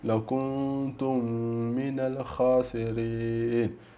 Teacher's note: E qua abbiamo mim, mim sakina con l'altra mim, shadda sempre lì, quindi law kuntum, idgham law kuntum, quindi fondi, perché la stessa mim è brutto dire due volte, quindi le fondi assieme